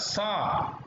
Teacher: ऊष्म वर्ण जो दंत से उच्चारित होता है वह आएगा सा।